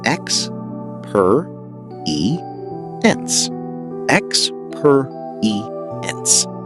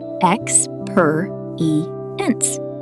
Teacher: The stress is on per.